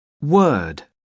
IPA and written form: wɜː(r)d (word)